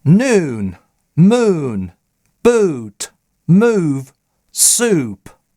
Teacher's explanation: Долгий произносится чаще всего в чуть более передней позиции. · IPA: uː